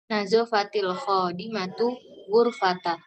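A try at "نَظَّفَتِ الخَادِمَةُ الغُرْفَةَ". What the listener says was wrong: Ghurfata. Nah, dofat ya, noto pakai tasdid bacanya ya.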